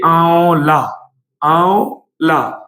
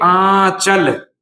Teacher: इनकी जो ध्वनि है वो मुख और नाक दोनों से निकलती है। जैसे कि देखिए आंवला आंवला तो यहां पर क्या है कि देखिए यहां पर आंवला जब हम बोल रहे हैं तो यहां पर जो है आपकी इसकी जो ध्वनि है वो आपके मुख और नाक दोनों से निकल रही है। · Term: अनुनासिक